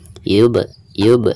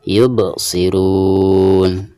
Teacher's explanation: di tengah-tengah bacaan sekaligus ketika suku ya maka dihukumi Qolqolah Sugro dan dibacanya itu harus ada pantulan